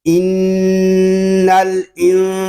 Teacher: ظاہری غنہ نہیں کریں گے بلکہ چھپا ہوا غنہ ہوگا، اخفا کریں گے۔